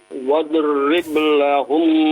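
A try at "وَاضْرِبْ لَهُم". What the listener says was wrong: Huruf dot ya, bukan huruf qalqalah ya, jangan diqalqalahkan. Wadrib, nah itu ba-nya baru qalqalah ya.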